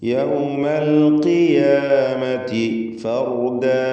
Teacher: ഖാഫിന് ഇസ്തിഅലാഇൻ്റെ ഹർഫാണ്, മക്സൂറാണ്, കുറഞ്ഞ തഫ്ഖീം കൊടുക്കണം.